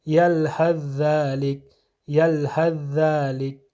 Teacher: ثا جو ہے یہ ذال میں ادغام ہوگا اور ثا کا کوئی اثر باقی نہیں رہے گا